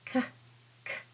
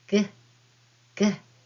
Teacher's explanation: When dakten mark is added to a hiragana, it changes an unvoiced consonant like k, k into a voiced consonant like g, g. With the letter ka, the sound transforms into ga.